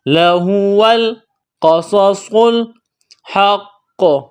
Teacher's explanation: whole, قاف کو موٹا کرنا ہے، صاد کو موٹا کرنا ہے، صاد میں سیٹی کی آواز پیدا کریں گے ، صاد کو موٹا کرنا ہے، لام کے ساتھ ملانا ہے، · بڑا قاف ہے نقطوں والا، اس کو موٹا کرنا ہے، یہاں پر وقف کریں گے تو قلقلہ کریں گے